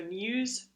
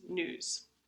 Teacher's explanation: So in words like news, some people pronounce it news with the glide, and some people pronounce it news without the glide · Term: palatal glide